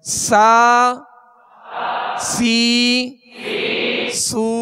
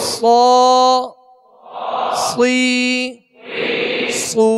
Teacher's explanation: سین کو باریک پڑھیں گے اور صاد کو پر یعنی موٹا پڑھیں گے